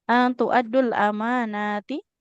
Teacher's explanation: Hamzahnya dia nggak boleh panjang ibu ya.